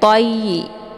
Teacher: Toyi karena di sini ada ya yang bertasydid, jadi cara bacanya to-nya ditekan sedikit langsung dileburkan ke dalam huruf ya.